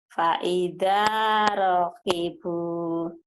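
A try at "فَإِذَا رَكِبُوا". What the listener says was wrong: Pendek, rohnya kan pendek.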